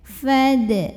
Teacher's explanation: Lalu berikutnya dalnya adalah qalqalah sugro. Karena ada huruf qalqalah yang sukunnya asli dan ada di tengah bacaan kita.